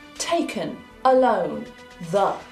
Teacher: It is a very neutral sound. I'm not moving my tongue, my lips, my teeth. It is just what comes out naturally. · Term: schwa